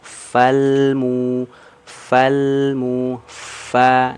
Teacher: Yang disentuhkan itu ujung gigi seri atasnya ke perut bibir bawah bagian dalam. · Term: huruf fa